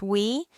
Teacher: This vowel is a combination of the single vowel wu and another single vowel e. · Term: complex vowel